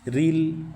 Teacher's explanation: را کے نیچے زیر ہے تو را کو باریک پڑھیں